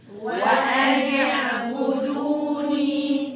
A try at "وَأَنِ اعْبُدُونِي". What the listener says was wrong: النون مكسورة. وأن اعبدوني.